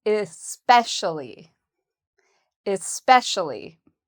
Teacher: So the second syllable has the stress.